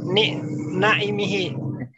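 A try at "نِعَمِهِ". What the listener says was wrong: Ni'amihi. Ainnya gak panjang, ni'amihi.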